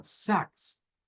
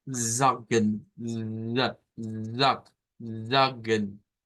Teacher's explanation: Sax si lo decimos de esa forma lo estamos diciendo mal tiene que haber un poco de vibración al inicio